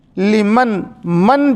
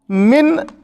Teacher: نون کی آواز کو یہاں پہ ظاہر کر کے پڑھنا ہے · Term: اظہار